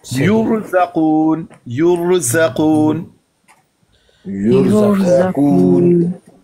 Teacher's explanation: उससे तो जैसे जबर की तरह था ना, बिल्कुल उसी तरह यहां पे रा साकिन, उससे पीछे वाले हरफ पर पेश, तो फिर भी रा को मुफखम पढ़ेंगे